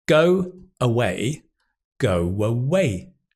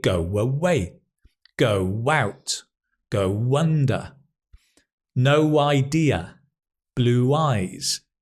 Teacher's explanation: It's a w. There's going to be a w connecting them.